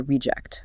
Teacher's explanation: Stress on RE, the quality control team marked the faulty item as a reject.